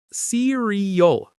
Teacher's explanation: Cereal. Three syllables. Stress on the first. Many learners say cereal, but it's cereal.